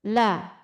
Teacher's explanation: ujung lidah satu tepi ujung lidah sampai ujungnya menyentuh gigi seri atas atau gusi gigi seri atas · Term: huruf lam